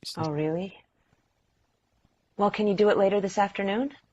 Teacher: the first can that we use is the schwa